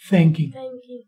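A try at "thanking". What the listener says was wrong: थे के साथ नहीं थे के साथ आप थे के साथ बोल रहे हैं जुबान बाहर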